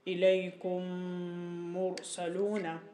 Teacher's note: جب میم ساکن کے بعد دوسرا میم آ جائے تو اس میم ساکن میں ادغام مع الغنہ ہوگا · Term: ادغام صغیر مثلین